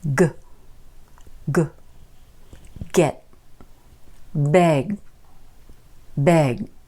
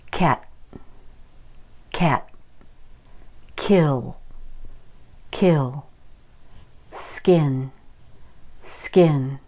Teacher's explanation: the G sound the go is voiced and the C or K sound is not